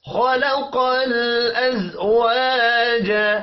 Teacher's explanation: خا اور قاف حروف مستعلیہ ہے، پر پڑھے جائیں گے. لام ساکن پر قلقلہ نہیں کرنا.